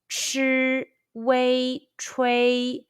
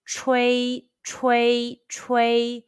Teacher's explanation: Let's combine the initial ch, the final wei, and the high-pitched first tone all together.